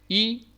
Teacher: front between half close and half open position unrounded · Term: short E